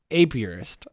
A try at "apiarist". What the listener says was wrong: I think you're saying a purist. It sounds like you're saying 2 words.